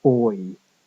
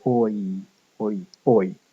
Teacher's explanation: Starting off somewhere close to the or vowel and ending again with the e vowel. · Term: fronting diphthongs